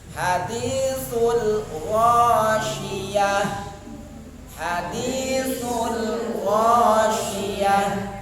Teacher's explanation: Ta marbuto. Ta di akhir ayat diubah suaranya menjadi suara ha. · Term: ta marbutah